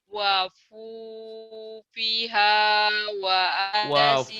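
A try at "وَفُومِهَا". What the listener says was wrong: Wafumiha bukan wafupiha. Wafu. Wafu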